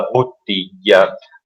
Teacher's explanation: bottiglia con questa bellissima, pesantissima B doppia all'inizio